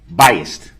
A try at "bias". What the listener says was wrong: No, bias. B-I-A-S. There's no T at the end.